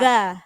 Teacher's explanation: za ujung lidahnya digigit